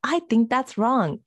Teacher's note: Every word stressed. Short sentence, major impact.